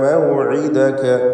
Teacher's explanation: ഐന് വസത്തുൽ ഹൽക്കാണ്, തൊണ്ടയുടെ മധ്യമാണ്